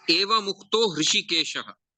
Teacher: Ru became Ra, and the Ra became U, and U became O. So whatever in simple words, the Visarga got converted into O. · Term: Visarga Sandhi